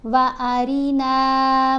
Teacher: रा के नीचे ज़ेर आ जाए तो रा को बारीक पढ़ते हैं